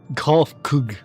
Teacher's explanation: with the emphasis on the first syllable